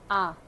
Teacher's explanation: विवृत स्वर के उच्चारण में मुख्य द्वार पूरा खुला होता है